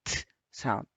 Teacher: this is a voiceless sound. So again, you can check that t sound. There is no vibration.